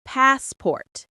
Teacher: The a sound is long like in car.